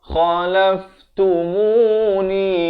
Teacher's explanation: kha ni pula makhrajnya di hujung kerongkong